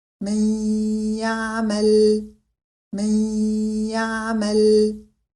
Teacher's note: la lettre Ya est accompagnée d'un nasillement prolongé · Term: idgham avec nasillement